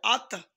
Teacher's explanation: ত সাকিনের কলকলা প্রতিধ্বনি সৃষ্টি করে